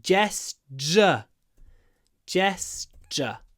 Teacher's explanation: Here, the ture would usually be a ch, which is kind of like a ch, like that, ch. But because of the s, the t becomes a d, and I get gesture.